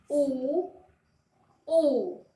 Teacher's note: आप देखोगे कि मुख की जो बनावट है वो किसकी तरह हो गई है? वृत्त की तरह हो गई है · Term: वृत्ताकार